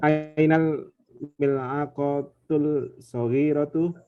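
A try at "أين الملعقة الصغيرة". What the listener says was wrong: Lamnya ini hati-hati.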